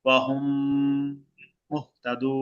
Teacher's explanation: এই যে অহুম, মিম সাকিনের পরে আরেকটা মিম আসছে, এখন মিমটাকে কি করব? গুণা করে পড়ব।